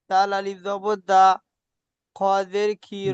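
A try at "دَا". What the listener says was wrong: দাল আলিফ যাবার দা, দালটি আলিফ মাদ্দা, এক আলিফ টান দিয়ে বলেন। দাল আলিফ যাবার দা, এক আলিফ টান হবে। বানান করবার সময় টান দিয়ে পড়তে হবে। দাল আলিফ যাবার দা, রিডিং পড়বার সময় সুন্দর টান দিয়েছেন, কিন্তু বানান করবার সময় টান হয়নি। বানান করবার সময় টান দেন। দাল আলিফ যাবার দা।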